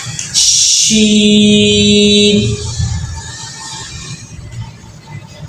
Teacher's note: زبان کہیں پر بھی نہیں لگتی، نہ اوپر لگتی تالو کے، بس اس میں زبان اور تالو کا درمیان والے سے استعمال ہو رہا ہوگا